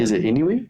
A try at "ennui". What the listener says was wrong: Ennui. Ennui. Two syllables, not ennui. Ennui. Ennui.